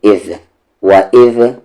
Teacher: ذال کا مخرج سامنے والے اوپر کے دانت کا کنارہ اور زبان کا کنارہ